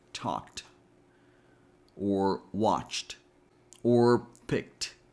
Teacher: The first option we have is to pronounce ED as T. And this happens when the base word ends in a voiceless sound, like k, p, s, f, sh.